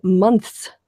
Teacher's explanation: So in the word months, to properly pronounce it, you've got the N, the th, and the s at the end of it, and it's actually quite deft to do that with your tongue if you're not a native-born speaker.